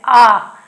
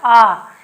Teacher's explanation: जब हम आ बोलते तो इसमें पूरा मुंह खुल रहा है, आप बोल के देख सकते हैं आ, तो मेरा मुंह देख लो पूरा खुल रहा है आ। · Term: विवृत स्वर